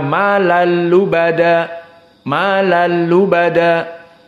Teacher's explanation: hukumnya idgham namun idgham bila ghunah Kenapa bila gunah Nah karena tanwin bertemu dengan lam tidak membutuhkan makhraj khaisum sehingga malal lubada malal lubada tidak ada makhraj kisum dan tidak